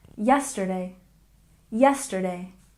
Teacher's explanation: And yesterday, stress the first syllable, yesterday, yesterday.